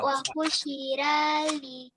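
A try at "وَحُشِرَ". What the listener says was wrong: Kalau ada huruf ro baris di atas jangan dibaca ra, Nak ya. Karena kalau ro baris di atas dia tebal. Dia seakan-akan seperti huruf o. Wahusyiro bukan wahusyira. Kalau sira dia tipis. Wahusyiro gitu.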